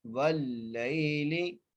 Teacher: لام کو باریک کر کے پڑھنا ہے